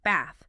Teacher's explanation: In many Southern British accents, it's a longer ah sound, so bath, rather than the shorter ah often heard in American English.